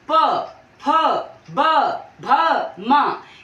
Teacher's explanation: हमारे दोनों होठ जो है वो आपस में स्पर्श कर रहे हैं · प वर्ग को जब हम बोलेंगे तो हमारे दोनों ओष्ठ जो है वो आपस में स्पर्श होंगे, जैसे प, फ, ब, भ, म।